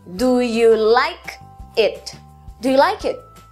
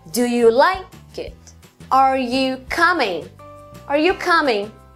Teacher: o último padrão tem duas sílabas fracas uma forte e uma fraca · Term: padrão acentual